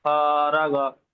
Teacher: শেষেরটা টান হবে না। শুরু টান হবে না, শেষে টান হবে না, মাঝখানে আলিফ মাদ্দাটা টান হবে।